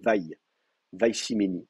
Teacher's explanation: le iode ayant tendance c'est une semi-consonne, hein, donc on va avoir tendance à le prononcer comme une diphtongue